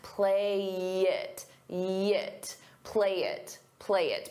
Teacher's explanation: We can combine play and it together. I'll take that y and I'll use it to connect.